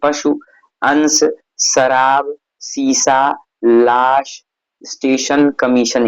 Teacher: तालव्य श के उच्चारण में जीहवा तालु को स्पर्श करती है। वहां दंत श के उच्चारण में जीहवा दांत को स्पर्श करती है।